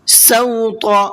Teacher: سوط اس طا کو بھی پر کر کے پڑھیں گے